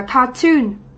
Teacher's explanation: mặc dù đây là danh từ, nhưng trọng âm lại rơi vào âm tiết thứ hai, chúng ta sẽ đọc từ này là cartoon, đúng không ạ?